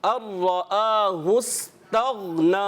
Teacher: गैन में प्यारे बच्चों को कलकला नहीं करना, आवाज़ लौट कर नहीं आनी चाहिए।